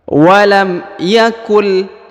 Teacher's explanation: Apabila huruf nun sukun bertemu dengan huruf lam, maka huruf nun sukunnya menjadi hilang.